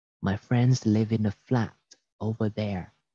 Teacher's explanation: My friends live in, có thể đọc nối với nhau thành live in.